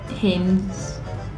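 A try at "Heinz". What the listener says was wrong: No, Hanes was the underwear company. That was A-N-E-S, you see? A-N-E-S. This one's E-I-N-Z. A, Hanes, right? So how would you pronounce E-I? E-I, what sound does that make? I, Hi. Hines. Hi.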